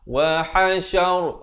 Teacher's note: Wa ha makhrajnya di tengah kerongkong. Wa hasyar, ra-nya jadi tebal.